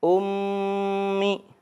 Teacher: mim di sini bertasydid, jadi kita harus membacanya dengan gunnah, ya, dengan dengung. Hukumnya gunnah.